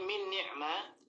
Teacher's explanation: Nun sukun, yang sukun menghadapi huruf yang berharokat di sini adalah nun lagi. Nah, ini dimasukkan nun yang pertama ke nun yang kedua sehingga nunnya menjadi satu kesatuan, ya. Dan diberikan tanda tasydid, ya, seperti itu. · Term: idgham